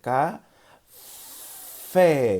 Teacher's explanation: Y veis que esa fe la hemos alargado, la hemos marcado muchísimo para que el niño las vaya asimilándolo.